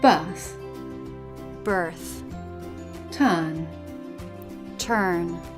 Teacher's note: when the letter R is in the middle position in a monosyllabic word and after a vowel in British English we tend to drop it